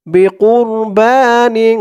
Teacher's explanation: নিন নাকের ভিতরে লুকিয়ে গুন্নাহ করে পড়তে হবে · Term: ইকফা গুন্নাহ